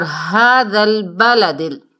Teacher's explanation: وَهَذَا الْبَلَدِ الْأَمِينِ، ہونٹوں کو گول کریں گے، اور هَذَا الْبَلَدِ، یہ ہا جو ہے اسے 2 چشمی ہا بھی کہتے ہیں، یہ چھوٹی ہا ہے، تو اسے ہم نے سینے سے ادا کرنا ہے۔ حلق کا وہ حصہ جو ہمارے سینے کے ساتھ جڑا ہوا ہے، یہ وہاں سے ادا ہوتی ہے۔